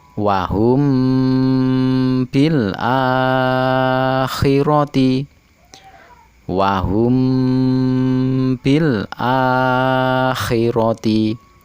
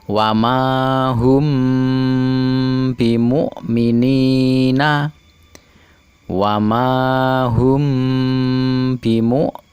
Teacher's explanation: mim mati bertemu dengan ba dibaca dengung dengan samar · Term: ikhfa syafawi